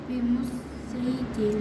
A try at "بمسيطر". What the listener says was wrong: اس میں سواد پڑھیں گے ٹھیک ہے سین نہیں پڑھیں گے بمسيطر ہاں یہ سین اور سواد دونوں لکھے ہیں لیکن سواد پڑھیں گے الا من تولا